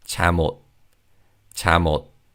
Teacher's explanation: And again, in terms of pronunciation, because the second syllable begins with an ion consonant, the 미음 받침 in the first syllable carries over to the second syllable. So when we say this word quickly, it's 잠옷, 잠옷.